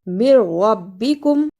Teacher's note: اسے من ربکم نہیں پڑھنا، میم کو را سے ملانا ہے